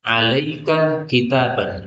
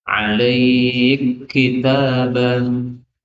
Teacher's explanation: Ini kaf ketemu dengan kaf, boleh dibaca idgham.